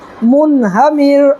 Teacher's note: نون ساکن کے بعد حروف حلقی کے 6 حرفوں میں سے چھوٹی ہاں آ رہا ہے، اس لیے ہم جو ہے یہاں پر اظہار کر کے پڑھیں گے